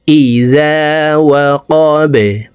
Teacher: বা কলকলার হরফ নিচের দিকে ধাবিত করে ধাক্কা দিয়ে বাকে সাকিন করে ফেলব।